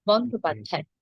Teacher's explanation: যে প্রথমটা অল্প প্রাণের দ, পরেরটি মহাপ্রাণের ধ।